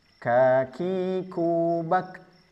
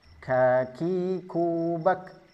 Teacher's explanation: Perhatikan hamsnya hanya sekedar percikan, bukan bak.